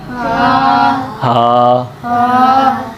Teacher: अब हा हलक के आखिरी से, ये नरमी वाला है